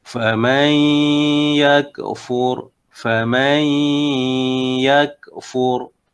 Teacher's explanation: Ya, dia baca sebanyak 2 harakat dan huruf nun, faman yakfur, huruf nun diidghamkan ke dalam huruf ya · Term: idgham ma'al gunnah